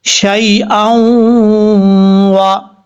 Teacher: یہاں پر شین کے بعد یا ہے, یہ یا ساکن ہے, یا ساکن سے پہلے زبر ہے, اس لیے یہاں پر یا لین ہے, اس کو لمبا نہیں کریں گے کیونکہ یا مدہ نہیں ہے. اور یہاں ادغام ہے, ادغام یرملون, ایک الف کی مقدار غنہ کر کے پڑھیں گے